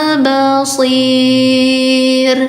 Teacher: I-nya 4 dibacanya panjang 4 harakat ya.